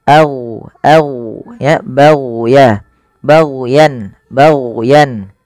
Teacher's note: jangan sampai memantulkan huruf gin karena huruf gin bukan huruf mantul